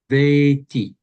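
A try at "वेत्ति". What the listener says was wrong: That's better, but just don't be shy of holding the T. Veti.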